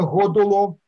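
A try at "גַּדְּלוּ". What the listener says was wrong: Да, но ударение не на первый слог, а на последний. Потому что это цивуя, это повелительное направление.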